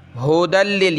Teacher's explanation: یا کو نہیں پڑھیں گے. ٹھیک ہے، یا آپ کو نظر آ رہی ہے لیکن نہیں پڑھیں گے.